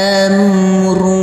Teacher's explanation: Huruf H kita baca panjang dengan panjang 2 harokat. Karena di atasnya ada seperti angka 6, yaitu tanda rumah yang terbalik.